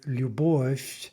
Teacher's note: Now compare that with любовь. Now there, that's actually a soft f, right? Because we're getting the devoicing